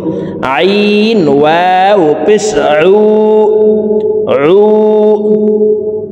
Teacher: আইনের উচ্চারণ হলকের মধ্যখান থেকে পড়ব।